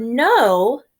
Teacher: okay now the word no hmm it has a no W I'm not hearing the W I'm just hearing the long o sound